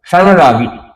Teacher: यह अनुस्वार ण जैसा आभास होते हुए संरागी उच्चारण में ण जैसा बोला महसूस होगा